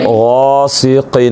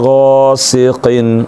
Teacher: من شر ما خلق، ما پڑھنا ہے، ما نہیں پڑھنا ہے، ناک میں آواز نہیں جانی چاہیے، ما خلق من شر ما خلق من شر ما خلق ومن شر غاسق، غین کو پر کرنے، یہ حروف مستعلیہ میں سے ہے، سین باریک ہوگی اس میں سیٹی ہوگی، اور قاف بھی پر کر کے پڑھیں گے